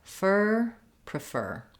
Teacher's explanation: in prefer we stress on the fur syllable